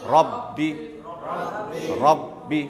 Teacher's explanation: बा के ऊपर तशदीद है कि नहीं? तो जब तशदीद आए तो कैसे पढ़ा जाता? 2 मरतबा